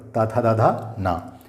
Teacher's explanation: इनके उच्चारण स्थान दंत हैं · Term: तवर्ग